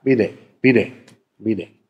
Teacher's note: Das D wird dann zu einem, einer Art R, ein R, was nur einmal vibriert. Ein bisschen wie das englische R.